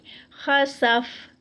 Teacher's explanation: جب اس کو سٹاپ کریں گے تو جو ہے ہمس ہوگا، یعنی سانس جو ہے وہ جاری رہے گی، سانس رک نہیں سکتی.